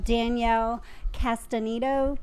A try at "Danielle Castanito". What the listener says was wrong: Nope, because you said O at the end.